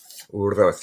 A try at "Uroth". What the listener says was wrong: you gotta practice your double R's. Uroth. Uroth.